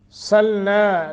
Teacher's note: نا نون کے آگے الف ہے، 1 سیکنڈ کی مد کریں گے